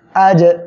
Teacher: জিম কলকলার অক্ষর সাকিন অবস্থায় আছে ধাক্কা দিয়ে পড়তে হবে